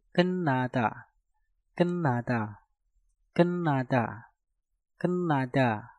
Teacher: Maka tiutnya kalian rubah menjadi suara nieun.